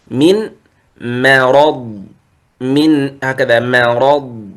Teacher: الميم مرققة والراء والضاد مفخم